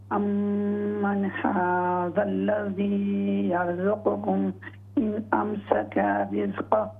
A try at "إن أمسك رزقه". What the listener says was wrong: ہاں جی, ہا کو ظاہر کریں. ان امسک رزقہ.